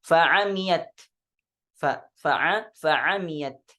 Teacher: Sedangkan di riwayah Syu'bah dibaca bi fathil ain wa takhfifil mim, dengan memfathahkan huruf ain dan meringankan huruf mim. Ya, jadi tanpa ada tasydid.